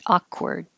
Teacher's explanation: You can make the K release and you hear it a little bit.